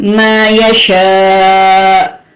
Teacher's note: ہلکا سا جھٹکا کیونکہ حمزہ جو ہے وہ ساکن ہو جائے گا تو تب ہم جھٹکا دیں گے.